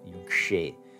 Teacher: The ja has become a vilirka. The sibilant has retroflexed itself.